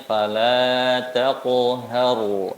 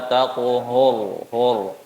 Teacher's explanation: Sifatnya tipis, tebal, tipis, tebal. Taknya tipis, qafnya tebal, haknya tipis, roknya tebal. Jangan tebalkan huruf yang tipisnya.